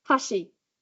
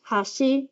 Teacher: we've got chopsticks, hashi, with a fall, and then bridge, hashi, with a rise.